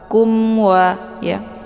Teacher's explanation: mimnya dibunyikan secara jelas atau jelas bunyi m-nya, cukup ditekan saja, tidak perlu ditahan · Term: idhar syafawi